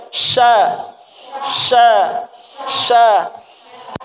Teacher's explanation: Jadi tengah lidah ditempelkan di langit-langit.